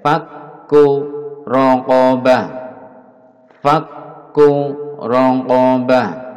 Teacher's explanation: kaf di tasdid, di double ditahan agar nampak tasdidnya